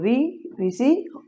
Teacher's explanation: इनका उच्चारण स्थान क्या है, मूर्धा